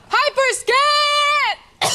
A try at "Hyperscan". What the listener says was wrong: No, you got to hold it out longer.